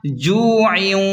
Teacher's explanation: جیم واو پیش جو کھینچیں، عین دو زیر عن، جوعن، تجوید کا خاص قاعدہ ہے، یہاں جوعن کی تنوین کے بعد واو آ رہا ہے اس لیے ملا کر غنہ کریں گے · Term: ادغام مع الغنہ